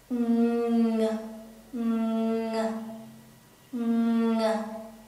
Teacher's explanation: the ng, we have to use the back of our tongue. This part will rise up and touch the back of our mouth roof.